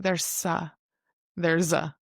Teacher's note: We have the voiced S, so it sounds more like a Z.